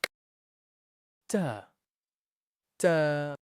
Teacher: The sound of ta is produced when the tip of the tongue touches the roots of upper central two teeth.